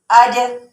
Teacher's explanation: यानी जीम, शीन और या, ये जो 3 हरूफ हैं जो कि जुबान के वस्त से अदा होंगे, लेकिन जब ऊपर के वो जुबान का जो वस्त होगा, जो सेंटर वाला पार्ट होगा, वो ऊपर के तालू से जा लगेगा, ठीक है। अब कुछ हम जीम की, इन हरूफ के अंदर से जीम की कुछ मिसालें देख लेते हैं जो कुरान पाक में आई हैं।